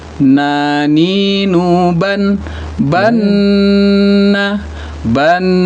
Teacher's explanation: Ah nun itu di punggung lidah juga ke langit-langit.